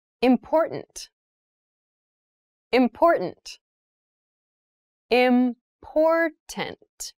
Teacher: that first t is actually reduced it sounds more like a d in fast speech